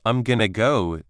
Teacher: The ing sound is gone, and to becomes a quick ta or even disappears into the flow.